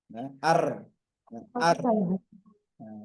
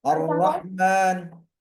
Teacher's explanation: Ro harus bergetar ya. Harus bergetar dan getarannya tidak boleh lebih dari dua getaran ar. Enggak boleh lebih dari itu.